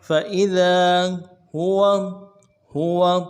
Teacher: فإذا فا کو نون سے ادا کریں گے، حمزہ کو نون سے ادا کریں گے، ذال کو باریک پڑھیں گے، ذال کے بعد الف مدہ ہے، ایک الف دار میں کھینچیں گے